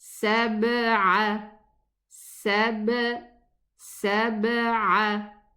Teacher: in the qalqala of the ba, the lips, just the lips part